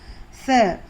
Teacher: س زبان کی نوک اوپر کے دانتوں کے کنارے کو لگنا ہے. س نہیں سنائی دینا.